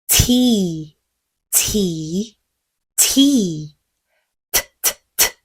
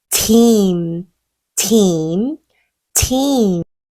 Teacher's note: 위치는 아까 했던 D랑 같은 위치예요. 윗니 바로 뒤쪽에 혀끝 갖다 대시고요. 입천장을 밀듯이. 근데 이번엔 시동음이 없이 공기만요. 성대를 울리지 않으니까 훨씬 쉽죠.